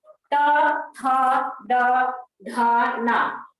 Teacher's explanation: यानी आपकी जीभ का स्पर्श दंत से, यानी दांत से किया जाता है। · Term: दंत वर्ण